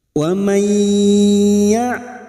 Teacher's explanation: Siap masuk dan mendengung. Masuk pada huruf berikutnya yaitu huruf ya. Dan mendengung selama 2 atau 3 harokat. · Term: idgham bi gunnah